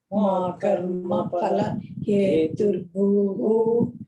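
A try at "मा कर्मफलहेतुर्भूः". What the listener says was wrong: Again, heturbhuhu has to be split. Ma karma phala heturbhuhu. Ma karma phala heturbhuhu.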